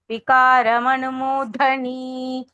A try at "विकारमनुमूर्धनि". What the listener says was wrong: Murdhani, need not elongate it. Murdhani, so like slightly only, not too much. Because it is actually hraswa. Murdhani, like that.